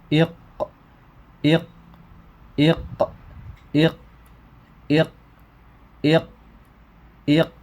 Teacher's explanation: Maka kalau benar ee pangkal lisan itu akan bertemu dengan ee langit-langit yang lunak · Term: qof